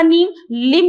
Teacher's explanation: नल का न जो परिवर्तित हो जाता है लट्टू के ल में